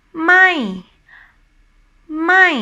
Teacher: So that the symbol, it looks like a mountain or upside down V. So ไ ม ่ the voice go up first and then drops down. ไ ม ่ For me, it sounds a bit nasal, but just a little bit that for me. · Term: falling tone